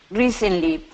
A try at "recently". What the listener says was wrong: Yep, that's perfect.